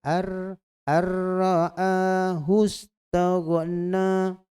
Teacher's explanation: Dia kena idgham kamil. Ya, idgham kamil itu maknanya dia terus baca pada ra tanpa huruf nun